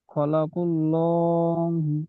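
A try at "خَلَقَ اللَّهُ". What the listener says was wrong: এটা খলা নয়, খ লাম, এখানে লাম সাকিন আছে, হ্যাঁ। খ লাম জাবার খল, খল করল বলবেন। হি, হাজের হি।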